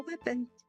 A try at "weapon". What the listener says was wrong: Why do you keep on adding the D to the end?